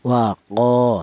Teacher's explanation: Kalau tidak ada alifnya ini, maka huruf qof yang berharakat fathah ini dibaca pendek yaitu satu harakat saja